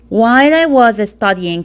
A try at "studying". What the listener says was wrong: While I was studying, the T also you need to pronounce with more aspiration. So I think the T and the D consonant sounds are hard for you.